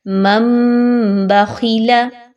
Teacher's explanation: غنہ بھی کریں گے، آواز کو ناک میں بھی روک کے رکھیں گے اور میم کی ساؤنڈ نکالیں گے، نون کی ساؤنڈ کو بالکل ختم کر دیں گے۔ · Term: اقلاب